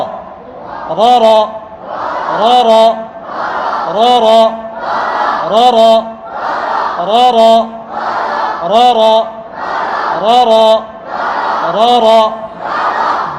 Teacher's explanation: র জবর, রর সময় মুখ যেন গোল না হয়।